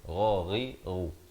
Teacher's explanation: Ghain makhrajnya di hujung kerongkong ini.